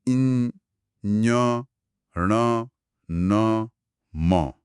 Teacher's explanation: और साथ ही हमारे पास पंचम वर्ण या नासिक के ध्वनियां भी हैं। जो नाक से बोली जाती हैं।